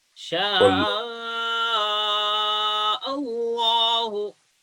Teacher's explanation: Make heavy the lam of Allah.